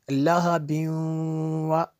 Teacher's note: یہ جو تنوین ہے، تنوین کے بعد واو ہے حروف یرمالون میں سے، اس لیے یہاں پہ غنہ ہوا، یہاں پہ یعنی ادغام ہوگا۔